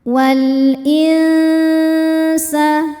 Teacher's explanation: Maka cara bacanya lam dibunyikan dengan jelas atau izhar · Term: izhar qamari